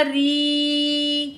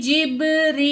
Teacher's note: यहाँ पे या मद है, दो अलिफ के बराबर खींच के पढ़ेंगे